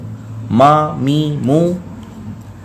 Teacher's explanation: جب دونوں ہونٹوں کا خشک حصہ آپس میں ملتا ہے تو وہاں سے میم ادا ہوتا ہے۔ جو باہر والا حصہ ہے ہونٹوں کا اس کو کہتے ہیں خشک حصہ۔